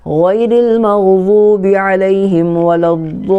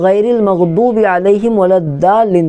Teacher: ضاد کا مخرج ہے زبان کی کروٹ اور اوپر کے داڑھوں کی جڑ